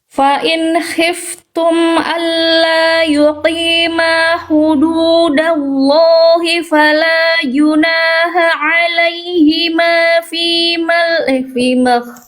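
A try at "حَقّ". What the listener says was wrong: Terus Bunda tadi, maaf, di sini haknya bunyinya kurang duduk ya. Hak, tegaskan lagi hak kecilnya, hak pedasnya ya. Tadi agak samar-samar condong ke hak juga ya.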